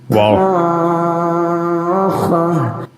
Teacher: when reciting this word the vowel is supposed to be stretched for six seconds as follows which gives the impression of a trumpet being sounded